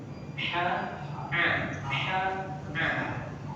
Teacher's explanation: makhrajul huruf pada tempat yang keluarnya huruf itu a dengan ha itu sama di tengah tenggorokan ini, di tenggorokan.